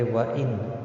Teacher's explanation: نون ساکن کے بعد حلقی ہا ہے، اظہار حلقی ہوگا، نون کو ظاہر کر کے پڑھیں گے